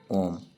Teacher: प्लुत स्वर जिनका उच्चारण तीन मात्राओं तक होता है।